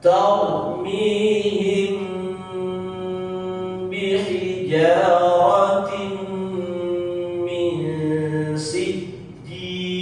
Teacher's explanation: mim sukun bertemu huruf ba, maka harus dibaca ditahan pula